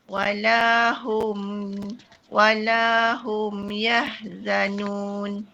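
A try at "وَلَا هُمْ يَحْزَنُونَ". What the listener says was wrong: Okay, yahza. Za tu biasa. Jangan nipis sangat. Yahzan.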